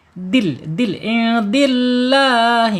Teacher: dal ini secara makhraj ada di allisan yaitu ujung lidah menyentuh pangkal gigi seri ya.